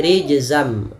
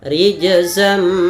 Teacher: masukkan tanwin ke huruf mim awalnya rijzan ketemu mim menjadi rijzam nunnya diganti dengan mim